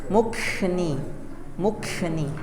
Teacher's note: Seperti huruf kaf. Seperti huruf K, tapi K-nya itu dihembuskan. K gitu. Mukni.